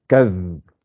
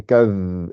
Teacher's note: c'est le bout de la langue qui sort avec l'extrémité des dents, des incisives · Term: zal